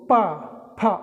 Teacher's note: आप अगर आप पा बोल रहे हैं तो आप दोनों ओठ आपके मिलेंगे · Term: ओष्ठ